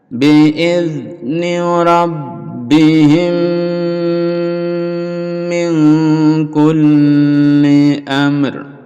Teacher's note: mim sukun bertemu dengan mim, jadi dilebur jadi satu, itu mimi, lalu didengungkan dan dipanjangkan dengungnya.